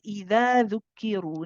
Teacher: There are often some people who haven't really studied Tajweed, especially if you're from India, Pakistan, because you have this letter in your languages and it's pronounced as a za. In Arabic, it is not pronounced as a za, it's pronounced as a the. For this, the tip of the tongue touches the bottom edge of the upper 2 incisors. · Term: dhal